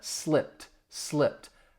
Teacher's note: You hear me emphasizing that t which is the ed d sound. The ed d in slipped because it's the p is voiceless. It really would sound like a t.